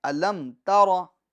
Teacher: میم کے سکون کو کامل طور پر، میم کے اندر ٹھہراؤ ہو، جماؤ ہو، آواز لوٹنی نہیں چاہیے · میم کے سکون میں جنبش ہو رہی ہے، آواز میں ٹکراؤ پیدا ہو رہا ہے